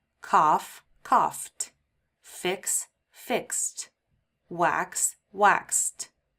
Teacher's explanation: Because all of these end in voiceless sounds without a vibration, we pronounce the ed as t